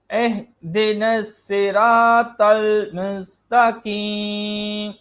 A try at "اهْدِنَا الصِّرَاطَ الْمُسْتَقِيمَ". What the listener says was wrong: اب یہاں پر مستقیم پڑھا تو کاف کی ادائیگی ہو رہی ہے، کاف نہیں ہے، خوف ہے.